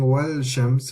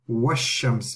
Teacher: the alif is being skipped and the lam is being skipped. We're not saying wa and then la shams or something. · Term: sun letters